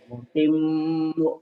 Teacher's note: M-nya aja yang dipanjangkan, M-nya aja, mu-nya mah enggak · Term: nyamber dan double